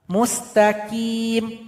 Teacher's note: Kemudian di sini ada huruf qof. Huruf qof keluar dari pangkal lidah. Namun suara harus dinaikkan ke langit-langit. Ti tidak boleh qi seperti huruf kaf.